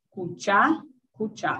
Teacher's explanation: Aqui o dado pelas parcialidades Nhandewa e Umbiá, cuchá, cuchá, sílaba tônica passando, cai a última sílaba e a sílaba tônica passa a ser a última